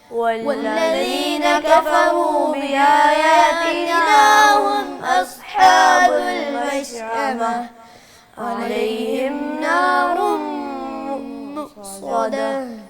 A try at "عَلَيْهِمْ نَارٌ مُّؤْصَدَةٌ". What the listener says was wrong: علیہم، عین کی آواز صحیح نکالیں، آخری آیت دوبارہ پڑھ.